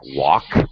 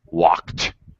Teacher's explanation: the k sound is just i'm not actually voicing it